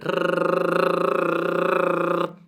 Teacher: la lingua praticamente batte, o meglio vibra, tra il palato superiore e l'arcata superiore dei denti